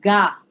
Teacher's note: the change in the pronunciation is going to be such that the aspiration of these letters is totally dropped